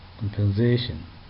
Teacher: Compensation, third syllable takes the stress.